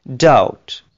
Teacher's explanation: دیکھیں بی بیچ میں سے گر گیا اور OU کے بعد ٹی کی ساؤنڈ آ رہی ہے